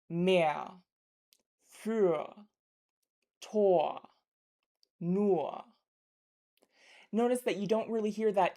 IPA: ɐ̯